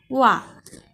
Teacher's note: దంతోష్యం అంటే దంతాలు పెదవి సాయంతో పలికే అక్షరాలని దంతోష్యం అంటారు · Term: దంతోష్యము